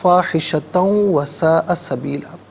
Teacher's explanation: تا پر دو زبر کی تنوین ہے، اسے واو کے ساتھ ملائیں گے، واو کی آواز کو غنّے کے ساتھ ادا کریں گے، یہاں یرملون کا قاعدہ اپلائی ہوگا۔